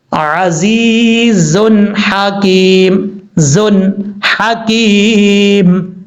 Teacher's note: ہا کا مخرج ہے گلے کا درمیان ہے، گلے کے درمیان سے پہلے ایک سائڈ سے ہا، دوسری سائڈ سے عین ادا ہوتا ہے.